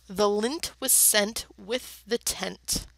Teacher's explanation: notice the repeated n that NT sound at the end of those